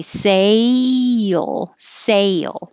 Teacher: if you don't have your tongue rise it will sound like cell